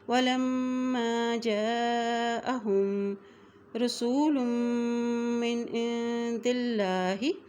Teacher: وَلَمَّا، یہاں دیکھیں میم کے اوپر شد آ گئی ہے اس لیے لام کی زبر کو میم کے ساتھ ملائیں گے، اور جب میم کے اوپر شد آتی ہے تو وہاں پہ غنہ بھی کیا جاتا ہے